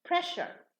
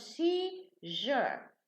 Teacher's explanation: Okay, so when we add the ure, now the S, the pronunciation, changes into sha. So press becomes pressure in pronunciation.